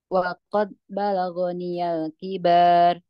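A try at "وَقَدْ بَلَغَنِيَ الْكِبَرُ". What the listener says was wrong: Barnya itu tidak ada alif, jangan dibaca panjang.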